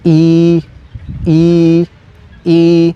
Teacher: es una vocal larga con Tono bajo es decir vamos a duplicar el sonido de la i